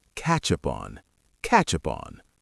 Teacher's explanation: Catch up on blends together into one smooth sound. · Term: connected speech